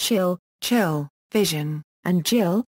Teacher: consonants articulated with the tongue near or touching the back of the alveolar ridge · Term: Postalveolar consonants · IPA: [ʃ] [tʃ] [ʒ] [dʒ]